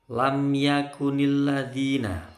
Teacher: mim sukun ketemu ya tidak boleh dengung ya mim sukun hanya boleh dengung kalau ketemu mim atau ketemu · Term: Idhar syafawi